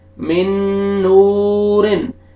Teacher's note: नून साकिन के बाद हरूफ यमून में से, हरूफ यरमलून में से जो 4 लेटर्स हैं यमून, उनमें से नून आ रहा है तो यहाँ पे आपने इदगाम करना है गुन्ना के साथ। मिन नूरिन, वाव मत है, वाव से पहले दम्मा है, आपने नून को खींचना है।